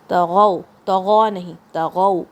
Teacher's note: تو بھاری، Arabic language کا سب سے بھاری لیٹر ہے تو. غین کی آواز حلق کے اوپر کی طرف سے آئے گی، اپر تھروٹ سے، اور پھر یہ لین ساؤنڈ ہے واو کا.